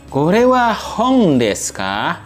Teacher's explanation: Nanti pengucapannya K-nya ini agak naik ya, karena ini kalimat pertanyaan. · Intonasinya paling terakhir K-nya itu agak naik karena kalimat pertanyaan.